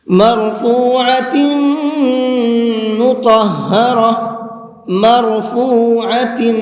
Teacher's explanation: اس را کو پر کر کے پڑھیں گے، منہ بھر کے پڑھیں گے۔